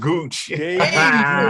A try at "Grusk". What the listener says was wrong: It's with an R.